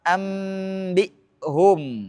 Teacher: Hukum ketiga yaitu iqlab memiliki satu huruf yaitu ba, maka nun mati atau tanwin diubah menjadi mim ketika bertemu dengan huruf ba tanpa idgham